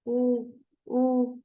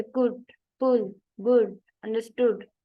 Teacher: relaxed है, यानी कि ये शॉर्ट वाउल है